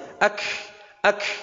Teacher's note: Karena kaf sukun harus ada hames.